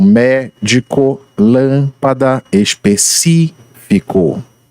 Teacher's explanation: E por último, nós temos as proparoxítonas, em que a sílaba mais forte é encontrada na antepenúltima sílaba